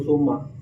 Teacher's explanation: sapur-sapur mim atawa nun di mana-mana ditasdidan maka wajib dibaca gunnah dengung kana irung. Panjangna gunnah 2 sampai 3 harkat.